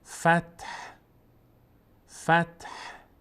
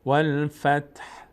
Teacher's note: والفتح یک رایحه‌ای از صدای ه رو باید تلفظ بکنیم تا مشخص بشه جای ه بود در هنگام وقف.